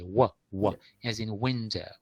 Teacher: So the first sound in window is also a bilabial sound.